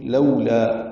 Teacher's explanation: لو وولین ہے، ہونٹوں کو نہ تمام گول کریں گے. لا الف مدہ ہے تو حرکات لمبا کریں گے.